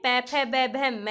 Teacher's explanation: इसका जो उच्चारण स्थान है वो होठ है, और इसको ओष्ठ्य बोला जाता है।